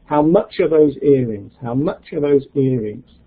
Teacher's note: Where's the stress? Much and earrings.